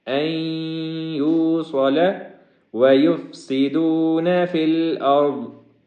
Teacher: یہاں پہ آخر میں فی الارض کے اندر را کو اور ضاد کو دونوں کو موٹا پڑھیں گے۔